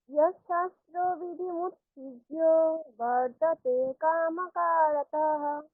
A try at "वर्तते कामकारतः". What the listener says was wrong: রতাহ হয়ে যাচ্ছে, কারতহ, রতহ একসঙ্গে, হ্যাঁ। আবার আমি বলছি পুরোটা। यशास्त्रविधिमुत्सृज्य वर्तते कामकारतः।